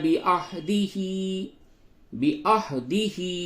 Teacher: بعهده ہا کھڑی زیر ہی کو تھوڑا سا کھینچیں گے